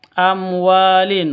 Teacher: wa panjang dua ketukan karena ada Alif diawali dengan F fathah sebelumnya Alif itu ada fathah begitu sebelumnya